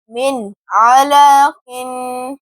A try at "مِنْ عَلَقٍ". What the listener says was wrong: قاف کی آواز کلیئر کریں، عین بھی ادا کریں، حمزہ ادا ہو رہا ہے. علق